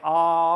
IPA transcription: ɑ